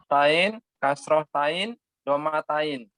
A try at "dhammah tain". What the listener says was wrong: Dhammah, ada mimnya tasydid. Dhammah tain.